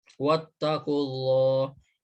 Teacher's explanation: hukum tajwidnya itu lam jalalah tafkhim dibaca tebal